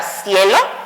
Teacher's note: formé un diptongo uniendo vocal, una débil, la I, y una fuerte con la E, y formé la sílaba cie, ¿ok?